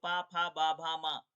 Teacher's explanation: होंठ टच करता है ना, होंठ से होंठ मिलते हैं ना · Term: होस्ट व्यंजन